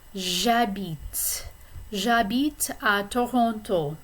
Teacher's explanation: habite, the H is silent, so this is really a vowel sound. The word is beginning with a vowel sound, which is a.